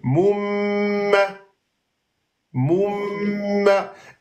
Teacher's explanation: le deux temps se fait sur le soukoun, pas sur la fatha. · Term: mim soukoun